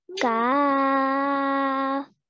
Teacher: So for example, over here, this is the letter kaf. So we're going to pronounce it as the letter kaf, but we're going to stretch for 4 counts because of the madde kabir. So we're going to say kaf.